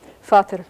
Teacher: And if you compare all of these words for father, which begin with a P in the Romance languages, notice that in English, father begins with an F, which is very similar to its fellow Germanic language, German, where the word for father is written with a V, but it really is pronounced with an F sound. So these two Germanic words for father actually share the first consonant, namely F, Vater.